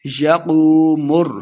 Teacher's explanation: یقوم الروح والملائکۃ صفا، یوم لمع نہیں کریں گے، یقوم، قو قاف کو موٹا پڑھیں گے، واو مدہ ہے، دو حرکات لمع بھی کرنا ہے